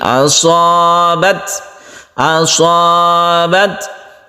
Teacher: ketika sukun ta itu kita berhembus nafas sedikit sehingga muncullah di situ seperti suara s ya, tapi sedikit.